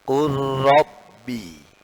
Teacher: Nah, tulisannya Qul Rabbi. Nah, ketika diidghamkan, maka hasilnya lamnya seakan-akan hilang, masuk ke dalam ra, ra-nya jadi tasydid.